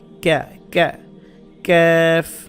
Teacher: জিব্বার গোড়া যেখান থেকে উচ্চারণ করছেন তার একটু সামনের দিকে আনলে যেটা হয় সেটা হচ্ছে ক্যাফ